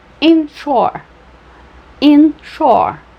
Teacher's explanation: só tenho duas sílabas, mas eu tenho uma subtônica e uma tônica